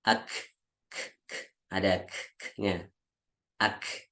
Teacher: Kemudian kaf, kaf itu ketika dia sukun, jadi kita bacanya ada ak, ada k-nya, ak, ada sedikit udara yang keluar